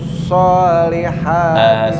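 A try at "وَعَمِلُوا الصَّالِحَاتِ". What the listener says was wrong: sebentar, wa amilus bibir, mohon bibir nggak ikut-ikutan ya. Wa amilus bukan wa amilus kalau wa amilus itu berarti bibirnya ikut-ikutan.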